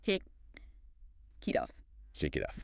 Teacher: That T sound, when it's between two vowels, softens. It turns into what we call a flap T. It sounds almost like a soft D. A soft D, so not T off, but D off.